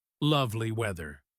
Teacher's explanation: That extra length on the word lovely